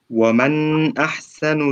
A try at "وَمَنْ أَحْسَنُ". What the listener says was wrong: لا هو شوف يقول ومن احسن بس مش ومن، ما تطولش في النون.